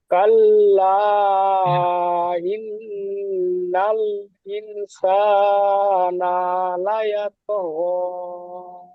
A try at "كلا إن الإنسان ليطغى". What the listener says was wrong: নাটা টান হয়ে গেছে, সাটা টান হবে। ইনসান লা ইয়াতগা। নাটা আপনার টান হয়ে যাচ্ছে, ওটা প্র্যাকটিস করে নেবেন, ঠিক আছে?